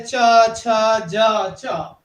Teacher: जो तालवी धुनिया ने उन्हां विच है इस विच हुंदा तालू ते रोक पैंदे, जीभ नाल तालू जुड़ जांदा है